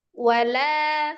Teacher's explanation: Kalau di kata wala itu boleh penekanan di la karena itu menyatakan tidak gitu kan. Ini wa dengan la itu kan dia dua kata ya terpisah dan tidak gitu ya.